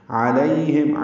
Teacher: عین وسط حلق سے ادا کریں گے، لئی یا لین ہے یہ نرمی سے پڑھیں گے، ہم میم ساکن پہ اظہار شفویہ ہا آپ سے حلق سے ادا ہوگا.